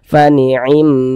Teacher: Ada huruf ya sukun sebelumnya ini harokat kasroh, maka huruf yang memiliki harokat kasroh ini dibaca panjang, sehingga hi kita baca panjang, dia menjadi mad tabi'i, panjangnya 2 harokat